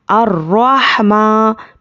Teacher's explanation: मीम पर खड़ा ज़बर है, खड़ा ज़बर बराबर है अलिफ मद्दा के, इसको एक अलिफ के बराबर खींच कर पढ़ेंगे। अर्रहमा, तो अच्छे से याद रखिए, जब भी आयत के बाद अलिफ लाम से कोई भी इस तरह से कलिमा शुरू हुआ तो यहाँ पर क्या करना है, ज़बर लगा के पढ़ना है।